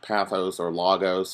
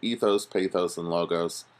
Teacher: I tend to pronounce them all with a long vowel sound at the end